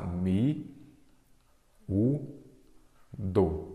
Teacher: a sílaba tônica é a penúltima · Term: paroxítona